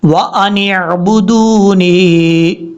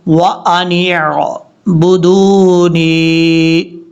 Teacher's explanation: نون کو عین سے کنیکٹ کریں گے